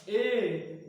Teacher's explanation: ए वृत्तमुखी नहीं है भैया। ए बोलने पर वृत्त नहीं बन रहा